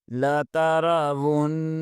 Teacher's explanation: واو کو نون کے ساتھ ملائیں گے اور نون مشدد ہے، یہاں پر غنہ لازمی ہوگا